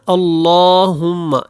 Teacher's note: اللہ والا لام ہے، اس کو آپ نے موٹا پڑھنا ہے، اور ہم یہاں پہ غنہ کر کے اور میم کو آپ نے بعد میں آواز ناک میں نہیں لے کے جانی.